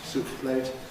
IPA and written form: ˈsuːʔp pleɪt (soup plate)